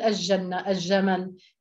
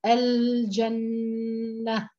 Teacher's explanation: وتحافظ على اللام مظهرة وتحافظ على جهرها وتوسطها، يعني الحرف بنلفظه وبنسمعه وبنتوقف عنده قليلا لأنه زمن التوسط، فهو حرف في زمن أطول من زمن الحركة، فبالتالي أنا بدي أقول الجنة، فإذا اللام هاي بدي أسمعها، ليست مما يضغم.